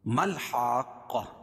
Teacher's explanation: میم کے بعد جو الف ہے اس کے بعد والی الف یہ دونوں نہیں پڑھی جائے گی، میم کو لام میں ملائیں گے